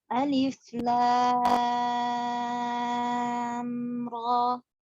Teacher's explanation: huruf alif ya tidak dipanjangkan, huruf lam 6 harokat dan ro 2 harokat.